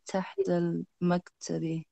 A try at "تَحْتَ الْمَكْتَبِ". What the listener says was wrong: You seem to sort of fade as you get towards the end of the sentence. You kind of fade, and I can't hear the end.